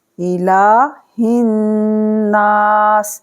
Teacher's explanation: تو کھڑا زبر کو 2 سیکنڈ کھینچا جائے گا